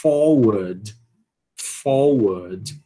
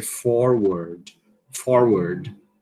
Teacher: Veja que aqui é o sotaque não rótico, né? · o Rzinho aqui, ó, no sotaque não rótico, ele não vai ser realizado.